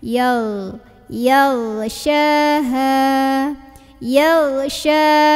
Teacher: Padahal bukan huruf g. Ghain itu dari tenggorokan paling atas dialirin suaranya.